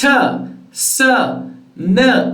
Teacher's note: ta sa na are all alveolar sounds